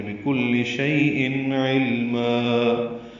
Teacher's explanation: بکل شیء علما، یہ وقفاً مد عوض ہے، دو حرکات لمبا ہے